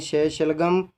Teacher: श का उच्चारण जब हम करते हैं तो हमारी जीवा किससे टकराती है, तालु से टकराती है